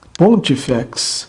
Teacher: E penúltima breve. Neste caso, o acento retrocede para a antepenúltima, qualquer que seja a quantidade desta.